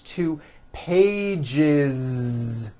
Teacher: we always add the ending is with a voiced Z · one page becomes two pages with that voice z